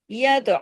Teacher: य तो पे कलकला भी होगा और त को हैवी भी किया जाएगा।